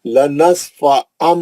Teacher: غنہ کرنا ہے، لنصفعًا دونوں ہوٹوں کو سختی سے پکڑ کے اچھا غنہ کرنا